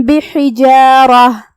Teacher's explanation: جو کہ یہاں حرف الرا ہے اور اس پہ زبر ہے تو را کا حکم ہے تفخیم، ہم اسے بھاری آواز میں پڑھیں گے